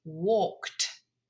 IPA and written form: wɔːkt (walked)